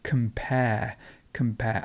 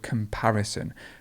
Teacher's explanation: the word comparison please note here how the stress changes so to compare the stress would be at the end and comparison goes in the middle